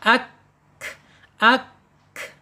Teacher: dia mengalir ya mengalir napasnya, udaranya ketika sukun ya. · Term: alhams